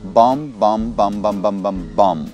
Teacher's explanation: Последнее «би» в нем не произносится. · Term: silent letters